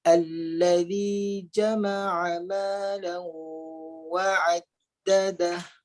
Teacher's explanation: Malau ketika menyebut huruf lam terus masuk huruf waw dengan memuncungkan bibir. Malau dengung tu ada ketika muncung bibir. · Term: idgham ma'al gunnah